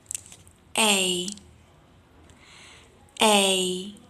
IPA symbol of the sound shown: eɪ